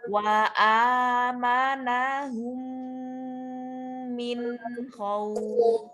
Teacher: Cukup untuk menuntaskan nun sukunnya saja. Jangan sampai min khauf itu terlalu lama ya. Iya, jadi bukan ikhfa ya.